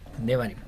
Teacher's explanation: se trata de una semivocal por el tema de que es corta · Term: cheva móvil